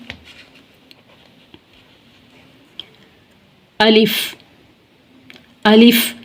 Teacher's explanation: जोफे दहन यानी मुंह के खाली हिस्से से अदा होता है। अलिफ़ ब दोनों होठों की अंदरूनी तरी से हमारे होठों का जो अंदरूनी हिस्सा है तरी वाला हिस्सा ब अदा होता है।